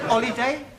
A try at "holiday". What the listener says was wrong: No. You keep dropping your aspirates. An aspirate is the sound made by the letter H. The words you've given me all start with H and not with an O. I want a word beginning with O.